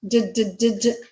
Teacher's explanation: D is voiced, d, d, d, d. Vocal folds are vibrating and you can feel that.